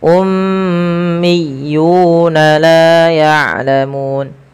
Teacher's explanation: seperti itu. Ummiyunam lafal miyuna ditekan huruf ya berharakat tasydidnya. Ummiyuna laun yulamu ini harus tahan dan juga kita panjangkan dia dua harakat.